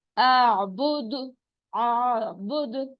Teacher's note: جب بھی یہ سکون ہوگا، ان پہ ساکن ہوں گے تو پھر اس پہ باؤنسنگ ساؤنڈ آئے گی، یعنی آواز ٹکرا کر واپس آئے گی